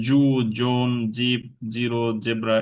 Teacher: আমরা এটাকে অনেক সময় মানে জিমের মতো করে ফেলি আর কি, শক্ত জি করে ফেলি